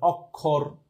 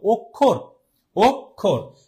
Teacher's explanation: আচ্ছা, এখন আমরা কি এটা যখন উচ্চারণ করি আর কি, অনেকে হয়তো এভাবে উচ্চারণ করে অক্ষর, বাট অক্ষর এরকম কখনো কিন্তু উচ্চারণ হয় না। অ এর মতো কিন্তু এখানে উচ্চারণ হচ্ছে না। উচ্চারণটা কেমন হচ্ছে? উচ্চারণ হচ্ছে ও এর মতো